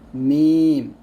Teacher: দুই ঠোঁটের শুকনো জায়গা হতে একটি হরফ উচ্চারিত হয় মিম